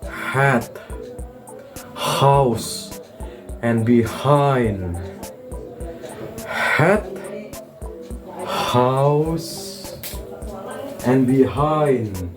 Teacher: The sound is a voiceless glottal fricative, produced by pushing through the opening vocal cord.